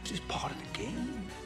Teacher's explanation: pronounces the T in part with a D sound. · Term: American T